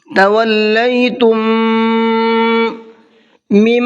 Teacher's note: تولیتم، تم کے اندر یہ دیکھیے ایک میم ساکن ہے اور اس کے بعد میں ایک اور میم آ گیا، تو جب میم ساکن کے بعد میں میم آتا ہے تو پہلے والے میم کو دوسرے والے میم میں مکس کر دیتے ہیں، ادغام کر دیتے ہیں اور غنہ کر کے پڑھتے ہیں